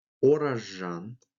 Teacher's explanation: Звук «з» под влиянием последующего «ж» произносится как «ж».